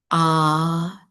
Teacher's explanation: So ah will be the sound that you make. It arises from the root of the tongue at the back. So when you don't put in any effort, you just make a sound. Ah is the sound that is produced.